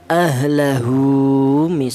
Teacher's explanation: Ini menunjukkan bahwa huruf ha ini dibaca panjang yaitu panjangnya satu alif atau dua harakat atau dua ketukan. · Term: masalah qasirah